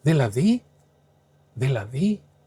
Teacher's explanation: if you say it with a rising intonation, it basically means something like, wait, what are you saying?